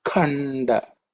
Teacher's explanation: The kha is with extra bit of air.